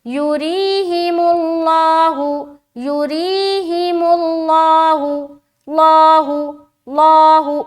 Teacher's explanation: लफ्ज अल्लाह का लाम को मोटा करके पढ़ेंगे। बताया था कि लफ्ज अल्लाह के लाम से पहले वाले हर्फ के ऊपर पेश या जबर हो तो हम लफ्ज अल्लाह का लाम को मोटा करेंगे, और अगर जेर हो तो बारीक रखेंगे।